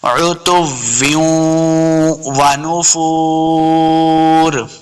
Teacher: واو مد ہے، اس کو دو حرکات لمبا کریں گے، آخر پہ ہم نے وقف کرنا ہے، عتویوں ونفور۔